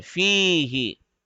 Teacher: We have to stretch the fi because of the ya madda rule.